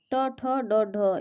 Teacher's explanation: ये आपका मूर्धन्य व्यंजन होती है और इसका जो प्रयोग होता है वो मूर्धा से करते हैं, क्योंकि बोलने में ट ठ ड ढ जो है ये मूर्धा से जीभ टकराता है, इसलिए ये मूर्धन्य व्यंजन होता है